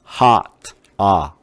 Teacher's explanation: 아 소리가 가장 크게 벌어지는 소리예요